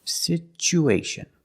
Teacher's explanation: Because there's no stress on the U, we change the T to the ch sound. Situation. After the U, situ, we need to link the U with the A.